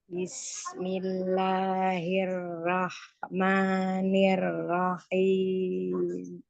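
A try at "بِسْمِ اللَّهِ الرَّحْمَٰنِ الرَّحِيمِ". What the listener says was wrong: Kenapa habis suaranya? Itu roh kan ada roh. Jangan keputus. Jadi kalau keputus jadi ke belakangnya nggak nyampe ya.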